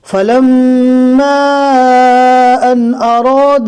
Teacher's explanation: دھیان سے پڑھنا ہے، یہاں پر میم کے اوپر تشدید ہے، میم کا بھی گنہ کرنا ہے اور میم کے بعد الف کے اوپر مد ہے، لہٰذا یہاں پر کھینچ کر پڑھا جائے گا